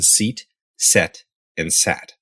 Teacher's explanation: a and at in English as in seat set and Sat you'll notice that your tongue starts up high E and goes to the middle of your mouth a and then it goes down to AA your tongue can